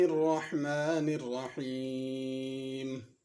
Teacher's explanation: بسم اللہ الرحمن الرحیم، الرحمن الرحیم دونوں میں بڑی ہا ہے، الرحمن الرحیم پڑھنا درست نہیں، اور الرحمن الرحیم دونوں میں را پر ہے، اس کو باریک نہ پڑھا جائے۔